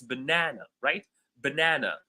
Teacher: the second syllable is louder, it's longer, and it's more prominent than the other 2 syllables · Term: stress